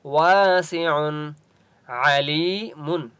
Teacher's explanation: عین کی آواز حلق سے نکالیں گے، یا مدہ ہے اس لیے لام کو ایک الف کی مقدار کھینچ کر پڑھیں گے۔